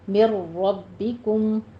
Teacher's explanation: را کے پر آپ تھوڑی سی تکرار کریں گے کیونکہ را جو ہے ہمارے پاس مشدد ہے